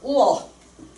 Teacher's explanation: 우를 발음하다가 어 잽싸게 넘어가. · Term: 반모음